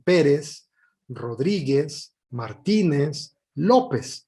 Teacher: todos estos apellidos van acentuados y todos llevan el acento en la penúltima sílaba